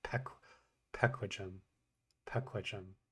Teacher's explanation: when I hear this sound pronounced, it sounds to me like an aspirated p.